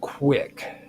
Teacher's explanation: the Q and the U together form a kind of labiovelar combination